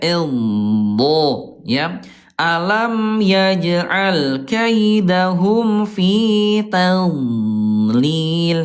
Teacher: suaranya memanjang nih dari mulai pangkal sisi lidah sampai ke ujungnya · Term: istitolah memanjang